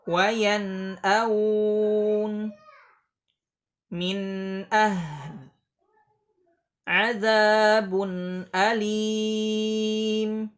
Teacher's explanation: Masih ada sifat gunnah yang mengiringi huruf nun, tidak menghilang. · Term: idhar halqi